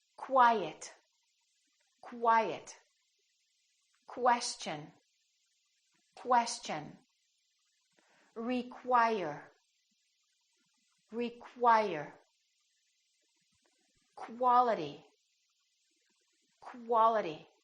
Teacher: they're pronounced as k w so there's a little W sound in here